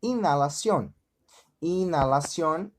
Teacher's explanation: Então, como exemplo, inalación. Inalación, a gente percebe que não pronunciamos o H, não é verdade?